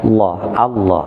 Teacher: terkait dengan lamnya kalau dia diawali sebelumnya lafadz Allah atau fathah maka lafadz Allah ini vokalnya terdengarnya suara O yang disebut dengan tafkhim